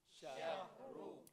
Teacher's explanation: Syahru, Ra bagi depan pun selama-lamanya tebal, sentiasa tebal.